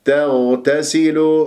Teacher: قبل اتى مفتوح التاء المشدده الثانيه مفتوح ما الطبيعه حركتين وتاثيره التاء قبل الغين وبعد الغين مرققه والغين مفخمه مرتبه رابعه مرتبه الساكن العين الساكن تحتاج الى دربه لانه يجري فيها الصوت